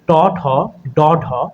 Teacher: মূর্ধা স্পৃষ্ট ব্যঞ্জন হচ্ছে ট, ঠ, ড, ঢ, অর্থাৎ আমাদের জিভটা মূর্ধাতে গিয়ে স্পর্শ পাবে। আমরা জানি, এর আগের পর্বে আমরা দেখেছি মূর্ধা কোথায়, অর্থাৎ ওপরের পাটির দাঁতের গোড়া থেকে শুরু করে তালু পর্যন্ত, শক্ত তালু পর্যন্ত যে স্থানটা, সেটাই হচ্ছে আমাদের মূর্ধা।